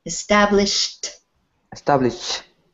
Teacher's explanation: this word has sh at the end of it, so we say this word is established with a T sound.